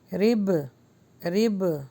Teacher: با پر جب اسٹاپ کریں گے تو جزم لگ جائے گا اور وہ جزم جب لگتا ہے با کے اوپر تو قلقلہ ہوتا ہے